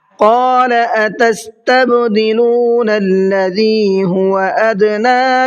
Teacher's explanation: قال کے قاف کو منہ بھر کے پڑھنا ہے، ادنا کے نون کو کھینچ کر کے پڑھنا ہے، اس لیے کہ نون کے اوپر کھڑا زبر ہے۔